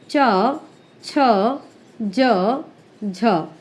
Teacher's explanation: वायु में बाधा उत्पन्न करते हैं, जिसके कारण उन्हें निकलने के लिए कुछ संघर्ष करना पड़ता है, थोड़ी सी मेहनत करनी पड़ती है, और इसीलिए इनको स्पर्श संघर्षी कहते हैं।